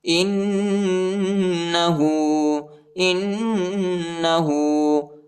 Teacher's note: حمزہ کو نون کے ساتھ ملائیں گے اور غنہ کریں گے، ٹھیک ہے، ہاں پر الٹا پیش آیا ہے، اس کو تقریباً 1 الف کے مقدار تک کھینچیں گے۔